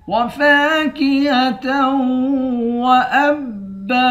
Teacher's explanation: حمزے کو با کے ساتھ ملا کر با کو سختی کے ساتھ جمع کر پڑھیں گے، آخر میں دو زبر کی تنوین ہے، دو زبر کی تنوین میں جب وقف کرتے ہیں تو ایک زبر پڑھتے ہیں۔